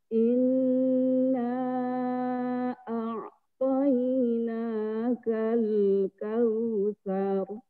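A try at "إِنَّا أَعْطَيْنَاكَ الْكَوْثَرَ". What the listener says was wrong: Kausarnya jangan kepanjangan. Kal kausar. Kepanjangan. Kal kausar.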